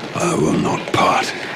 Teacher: you can hear the almost sibilant s of the dragon coming out